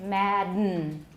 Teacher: instead of releasing it orally we push the air back and it came out through the nose that was a nasal release right and then we call that